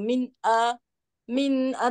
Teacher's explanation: Maksudnya kita kena terang zahirkan huruf yang kedua tu Min A min a tak ada dengung tak ada apa kita nak zahirkan di sini nak zahirkan huruf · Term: izhar